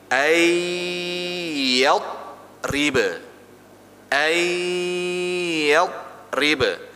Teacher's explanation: Jadi kalau yang ya sama waw itu separuh di mulut, separuh di hidung. Jadi gini. Ya, separuh di mulut, separuh di hidung.